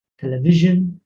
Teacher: television, pronounced with a j, not a sh, j. And then the service is televisione.